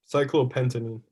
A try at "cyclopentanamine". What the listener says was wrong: Cyclopentanamine. There's a lot more syllables. Cyclopentanamine.